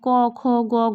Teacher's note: সেরকমই ব্যঞ্জন ধ্বনির ক্ষেত্রে এরা হচ্ছে কণ্ঠের জন্য দায়ী, মানে ক খ গ ঘ বললে দেখুন একদম কণ্ঠ থেকে আওয়াজটা বেরিয়ে আসছে।